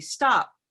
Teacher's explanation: the way we say it naturally as adults would be stop and that simply stops with no air so there's no puff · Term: stopped